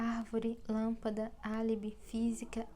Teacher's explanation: É uma palavra cuja sílaba tônica é a terceira. No caso, por exemplo, de árvore, nós temos 3: ar, vó e ré. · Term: proparoxítona, proparoxítonas